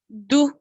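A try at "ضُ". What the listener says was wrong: You know, your pronunciation is close to dal, but no problem. Say it again, let me hear you.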